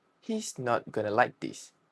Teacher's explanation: He completely swallows the t in not replacing it with a gloal stop. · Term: glottal stop